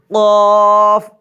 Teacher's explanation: زبان کا آخر کا جڑ جب اوپر کے تالو سے لگے تو قاف ادا ہوتا ہے۔ قاف زبان کا آخر کا جڑ اوپر کے تالو سے لگائیں گے۔